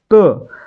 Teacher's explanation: त चा उच्चार करताना आपली जीभ दातांना स्पर्श करते